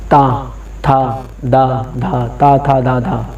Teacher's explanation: हिंदी में ता, था अगर बोलना हो तो दंत ध्वनि है ये